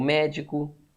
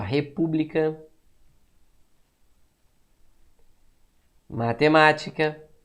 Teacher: a sílaba tônica é a antepenúltima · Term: proparoxítona